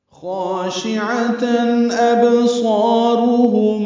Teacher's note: ابصارهم میں با ساکن پہ قلقلہ ہے، صاد پر ہے، الف مدہ ہے تو حرکات لمبا ہے، را پر ہے، ہم میں میم ساکن پہ اظہار شفوی ہے · تنوین کے بعد حمزہ آنے کی وجہ سے خاشعتن میں اظہار ہے